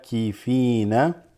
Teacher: this is the ayn with the long fatha